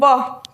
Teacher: व अब बोलेंगे तो दांत और होठ दोनों टच होंगे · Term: दंतोष्ठ्य